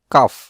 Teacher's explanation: জিহ্বার গোড়া হতে মুখের দিকে সরে উচ্চারণ হয় কাফ